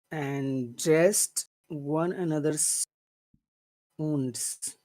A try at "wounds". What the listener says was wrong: Okay, but it's not uns, it's wounds. It's a very long, big sound. Dressed one another's wounds. Yes, it's a very big sound.